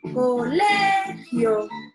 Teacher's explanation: En la palabra colegio, la sílaba tónica es le, mientras que las sílabas co y gio son las sílabas átonas